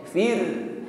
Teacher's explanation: Ra sukun sebelumnya ada kasrah, maka getaran pada ra-nya ringan